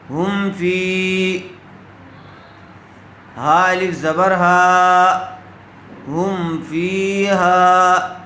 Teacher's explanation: بغیر غنے کے میم کو ظاہر کر کے پڑھیں گے۔ کیوں؟ اس لیے کہ میم ساکن کے بعد فا آیا ہوا ہے۔